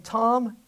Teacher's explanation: And this vowel sound comes right before a sound that we already know to be nasal. So we're going to make the vowel nasal when it comes right before a nasal consonant in the same syllable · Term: nasal vowel